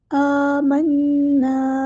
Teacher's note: آمنا، یہاں پہ مد اصلی ہو رہی ہے، آ کو ایک الف کے برابر ہم لمبا کریں گے. نون پہ غنہ زمانی ہو رہا ہے، ہم یہاں پر ایک الف کے برابر رکیں گے. آمنا، اور نا کو لمبا بھی کریں گے، مد اصلی ہو رہی ہے.